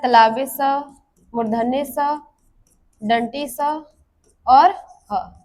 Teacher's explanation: जिन वर्णों के उच्चारण में मुख से गर्म हवा निकलती है, यानी जब इन वर्णों का उच्चारण किया जाता है, इन व्यंजनों को जब बोला जाता है तो हमारे मुख से गर्म हवा निकलती है।